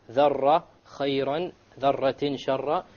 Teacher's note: You make sure there is no rolling of the R.